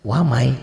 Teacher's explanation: begini ya Jadi yang namanya idgham itu tulisan dan bacaan beda ditulisnya ada bunyi non matinya dibacanya gak ada n-nya